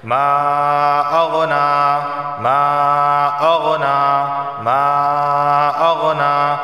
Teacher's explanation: لہبیوں وتب لہبیوں وتب ما اغنا، دیکھیں یہاں بھی مد منفصل واقع ہو رہا ہے کہ ما کے آخر میں الف مدہ اور اغنا کے شروع میں حمزہ آ گیا۔ مرضی ہے 2 الف کے برابر کھینچ کے پڑھا جائے، 3 کے برابر کھینچ کے پڑھا جائے یا 4 کے برابر کھینچ کے پڑھا جائے